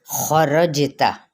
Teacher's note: جیم پہ کلکلا, تا کو لمبا نہیں کریں گے